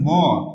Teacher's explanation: নাসিক্য ধ্বনিগুলা এগুলো হচ্ছে কি? নাক এবং মুখ থেকে একসঙ্গে বাতাস বের হবে।